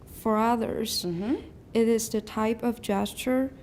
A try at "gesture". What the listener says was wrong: Everyone, gesture. Gestures. No S. Gesture. And remember, if you're saying gesture, push your jaw up so you can put it back up to eh. Gesture. Gesture. Don't say gesture. Gesture.